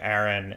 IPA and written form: æɹɪn (Aaron)